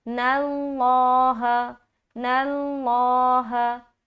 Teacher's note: یہاں پر لفظ اللہ کا لام سے پہلے نون کے اوپر کیا ہے؟ فتحہ یعنی کہ زبر ہے، تو لفظ اللہ کو موٹا کر کے پڑھیں گے